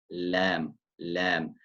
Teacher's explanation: The lam comes from the point at which the front and the sides of the tongue meet the roots of the upper teeth.